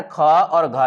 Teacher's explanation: जैसे कवर्ग में जो ये पीला से घिर रहा है ना ख और घ ये दूसरा और चौथा इसका होता है महाप्राण